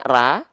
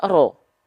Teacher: dia harus dibaca tebal huruf ro ketika berharokat fathah